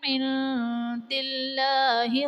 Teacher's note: عند اللہ میں نون ساکن کے بعد حروف اخفا میں سے دال آ رہا ہے، تو یہاں پر اخفا کا قاعدہ ہوگا، یعنی نون ساکن میں ہم غنہ کر کے پڑھیں گے، اور اس میں جلالت اللہ عز و جل کے لام سے پہلے دال کے نیچے زیر، تو یہاں پر اس میں جلالت اللہ عز و جل کے لام کو پر یعنی موٹا پڑھا جائے گا